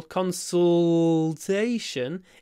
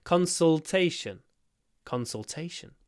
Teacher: It's a L. It's a dark one, a throat one.